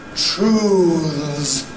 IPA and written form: truːðz (truths)